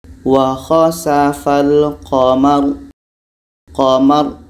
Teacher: Qamar, bunyi tebal karena lidah terangkat. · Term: tafkhim